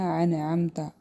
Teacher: نون ساکن کے بعد عین آیا ہے، حروف ہلکی میں سے، تو یہاں پہ اظہار ہوگا